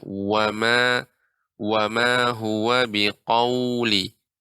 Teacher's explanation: wa di sini monyong bibirnya